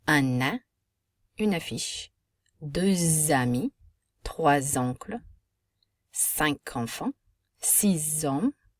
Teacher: We have what's called a liaison from the final consonant of one word to the vowel sound of the next word.